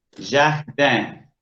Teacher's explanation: para no perder del todo la N, esa vocal se ve nasalizada. Se hace cargo del resto que dejó la N, ¿sí?